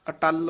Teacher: ਅਟੱਲ ਪਦ ਕਸ ਕੇ ਬੋਲਣਾ ਅਟਲ ਨਹੀਂ ਕਹਿਣਾ